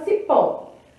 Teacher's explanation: já que a sílaba forte é a última temos uma oxítona